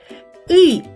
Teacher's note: І губи максимально розтягнуті в сторони у широкій-широкій посмішці. И губи злегка розтягнуті, утворюють овал, але менш видовжений, ніж при вимовлянні звука е. О.